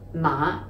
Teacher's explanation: in cantonese this is pronounced ma the low rising ma and it means horse